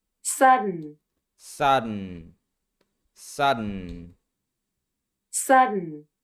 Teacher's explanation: D turns into an unreleased D and the T changes into a stop T.